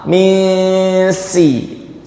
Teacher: Tidak dileburkan ke huruf sin. Nunnya masih nampak. Misi. Jadi dari sisi satu dia masih mirip idhar, dari sisi yang lainnya dia mirip idgham. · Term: ikhfa